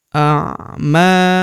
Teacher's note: huruf ma kita panjangkan 2 harokat karena terdapat tanda alif di depannya